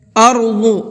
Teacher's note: ضاد کو منہ بھر کے پڑھنا ہے